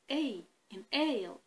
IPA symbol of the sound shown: ei